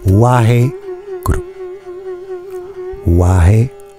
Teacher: il faut bien rouler le R.